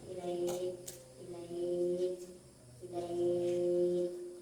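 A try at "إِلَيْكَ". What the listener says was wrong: Kaf itu ada sifat hamasnya. Ilaik bukan ilai. Ilaik.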